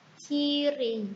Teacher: Pada silabel pertama terdapat konsonan bunyi ke, yaitu artikulasinya hambat tanpa suara, artikulatornya velar. Silabel kedua bunyi r, artikulasinya getar bersuara, artikulatornya apiko-alveolar.